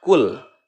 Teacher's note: Cara membaca huruf lam yang ada pada kalimat fi'il tersebut itu harus idhar, jelas ya. Kul, terdengar lamnya itu jelas ya, karena lam bertemu dengan huruf selain huruf lam dan ro ya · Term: lam fi'il